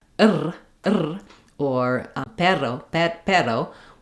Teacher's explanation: with one touch up, it's going to be a flap sound. Basically, if your tongue is lifting in the front, you're not doing the American R. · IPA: ɾ